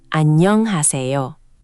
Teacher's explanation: The double nieun in annyeong creates a longer n sound. It's not annyeong, it's annyeong with the n held slightly longer.